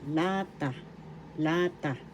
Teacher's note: The accent is in the first syllable, lata, lata.